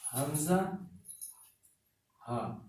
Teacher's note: یہ ہے حمزہ، ہا، عین، ہا، غین، خا. حمزہ ہا اینڈ آف تھراٹ سے ہے، یعنی سینے کے پاس سے حلق کا یہ ونڈ پائپ سے، تو اس کو جب ادا کرتے ہیں تو آپ کا سینہ بھی وائبریٹ کرتا ہے.